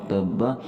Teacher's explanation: یہاں آخری لفظ با کے اوپر ہم قلقلہ کریں گے اور اس کا وقف بھی، اور اگر ہم نے وقف نہ بھی کیا، اگلی آیت کو بھی اسٹارٹ کر لیا، تب بھی اس کا ہم نے قلقلہ کرنا ہے۔